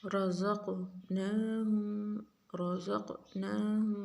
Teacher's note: را کو موٹا پڑھیں گے، قاف کو موٹا بھی پڑھیں گے اور قلقلہ بھی کریں گے اس کے اوپر